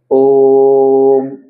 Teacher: तीन मात्रा का समय लगाकर ओम को बोला जाता है